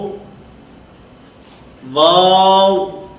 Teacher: اس واو کی ادائیگی میں کیونکہ ہونٹوں کو دخل ہے, ہونٹ گول ہوں گے تو یہ واو ادا ہوگا